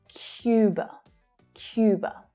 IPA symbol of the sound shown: j